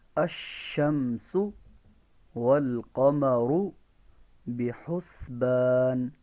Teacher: سین میں سیٹی کی آواز ہے